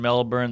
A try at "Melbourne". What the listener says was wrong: You got Brisbane right. But you're still pronouncing the R in Melbourne.